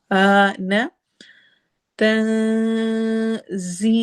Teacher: تا میں نون کی آواز کو ہم چھپائیں گے